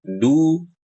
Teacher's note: saat baca du, kan harusnya monyong